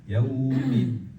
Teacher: dal itu dengan gusi, jangan keluar lidah ke gusi. Gusi gigi seri atas.